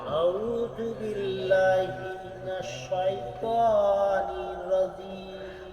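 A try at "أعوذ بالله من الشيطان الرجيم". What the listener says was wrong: দেখেন এখানে আপনি প্রথমত ভুল করছেন আউ বলছেন হবে আউ গলার মধ্যে যাবে আউ আউ এই একটা ভুল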